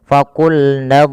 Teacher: kita yang ketiga huruf Dad ada satu sifat yaitu sifat istitalah istitalah di dalam lafal huruf Dad itu ada sedikit memanjang